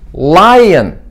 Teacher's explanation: clear L 사운드는 혀끝이 치경으로 가면서 바로 발음합니다.